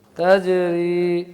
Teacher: را کو باریک اور جیم کو قلقلہ کرنا ہے